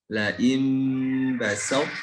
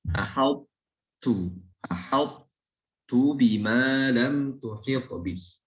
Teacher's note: ketika ada idgham huruf to ke huruf ta, sifat tebalnya tidak hilang. Sifat tebal dari to itu tidak hilang.